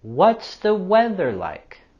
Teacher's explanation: We also have the TH sound in weather, weather. And with this question, we're going to have our falling intonation.